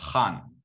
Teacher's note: it's like a Chinese h, the h. It's a voiceless velar fricative.